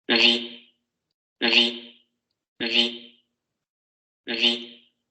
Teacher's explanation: Si escuchan detenidamente se pueden dar cuenta que existe ese momento vibratorio inicial